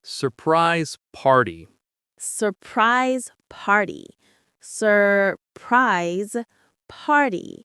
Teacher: The stress is on the first word and the first syllable of the second word.